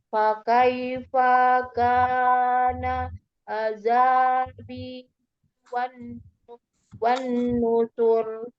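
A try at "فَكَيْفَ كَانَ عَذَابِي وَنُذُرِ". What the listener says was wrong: Wa nuzur, tidak ada tasdid nunnya, atau fa-nya masih baca panjang tadi. Fakaifa kana azabi wa nuzur.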